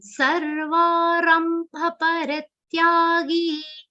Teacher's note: sa is followed by half ra and a complete va sound.